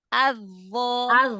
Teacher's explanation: Digesek sedikit. Dho kayak makhraj huruf zal. Cuman dia bedanya diangkat pangkal lidah.